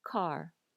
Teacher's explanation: Do you hear how there's air after the k sound? Car. In Hawaiian, there's going to be less air.